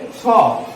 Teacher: ছ কিন্তু মহাপ্রাণ এবং অঘোষ একটি বর্ণ